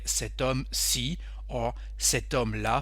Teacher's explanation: the H is silent in this word homme, so it's like a vowel